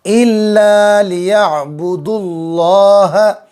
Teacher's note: اللہ کا لام پر ہوگا، پر یعنی موٹی آواز کر کے پڑھیں گے